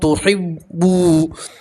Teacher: वाव मद्दा इसलिए 1 अलिफ के बराबर खींच कर पढ़ेंगे · यहाँ तनवीन का वाव के अंदर इदगाम करेंगे और 1 अलिफ के बराबर गुन्ना भी करेंगे